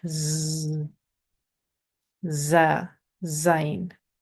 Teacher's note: In Arabic, this is the only letter, za or zain, which has the Z sound. When we say the Z sound, our teeth are kind of together, our tongue is behind, and we get that sharp Z sound.